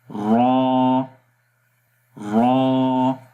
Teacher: یہ زبان سامنے والے تالو پہ لگ رہی ہے، تو اس کو دوبارہ پڑھیں گے را را۔